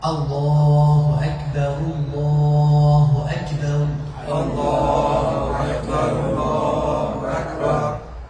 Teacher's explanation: When you say Allahu, who will make your lips round. When you say Ak, you need to pull your lips back. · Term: Hamza